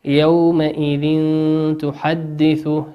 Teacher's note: تنوين أتى بعده حرف التاء والتاء من حروف الإخفاء